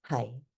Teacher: that's your sixth flat tone high